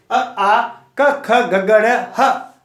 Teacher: तो जैसे देखो, अ आ क ख ग ग ड़ ह रामः, तो ये जो बोला मैंने कंठ से आवाज निकली है, देखो कहीं जीभ नहीं, क ख ग ग ड़, तो इसको क्या है, इस उच्चारण स्थल कौन सा है, कंठ और कोमल तालु, यानी क ख ग ग जीभ अंदर ही है, तो ये उसको बोलते हैं कंठीय।